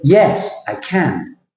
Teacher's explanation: right yes I can so you would say yes I can the shape of the sentence is big small big or heavy light heavy